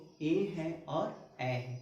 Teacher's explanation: ये और ए का जो उच्चारण स्थान होता है कंठ और तालु दोनों से होता है। किससे होता है तो कंठ और तालु दोनों से होता है, जिसको हम लोग ए और ए इसको कंठ तालु कहते हैं और इसको हम लोग कंठ तालाब्य वर्ण कहते हैं।